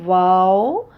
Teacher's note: اور واو دونوں ہونٹوں کو گول بنانے سے نکلتا ہے